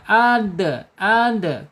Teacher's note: Di secara sifatnya ada di asyidah tertahannya suara